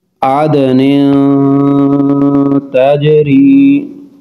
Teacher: عدن تجری، نون تنوین، نون پر دو زیر ہیں، نون تنوین کے بعد تا حروف اخفاء ہے، غنہ کر کے پڑھیں گے۔